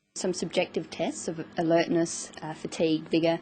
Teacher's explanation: She uses rising and falling tones, and a tone that's neither rising nor falling, just a flat tone